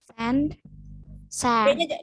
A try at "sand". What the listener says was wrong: D-nya jangan ketinggalan.